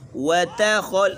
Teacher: القت ما فیہا وتخلت، ما فیہا وتا، یہاں تک باریک ہے۔ وتخل، خا موٹی ہے، پھر لام اور تا بھی باریک ہے